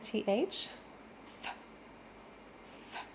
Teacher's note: the classic English th where the tongue is coming through the teeth and then it pulls back in